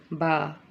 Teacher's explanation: با یہ حروف شفویہ میں سے ہے، یہ دونوں ہونٹوں کے تر حصے سے اس کو ہم ادا کریں گے، دونوں ہونٹوں کے تر حصے سے ادا کریں گے. pronounced from the wet part of the both lips.